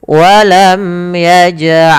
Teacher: lam bertemu dengan huruf lam yang sama, semisal ini, maka cara membacanya masukkan lam yang pertama kepada lam yang kedua. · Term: Idam mutamilain, idgham mutamatsilain